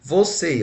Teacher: Você está acentuado na última, então eu tenho uma oxítona.